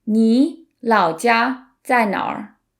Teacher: it's technically 哪 plus r, and then we've merged it into 哪儿